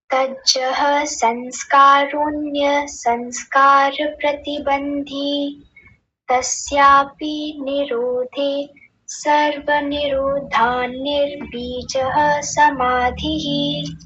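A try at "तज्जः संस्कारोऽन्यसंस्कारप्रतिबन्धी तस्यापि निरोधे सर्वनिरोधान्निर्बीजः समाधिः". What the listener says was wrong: एकदम ठीक है, बहुत अच्छा उच्चारण आपका, शोभनम।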